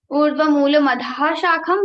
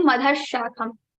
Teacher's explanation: Now after madhaha, we have sha. So sha will be repeated into 2 times and we will repeat it 2 times and this visarga sound will be removed. It will become urdhva moola madhash shakham 2 times sha.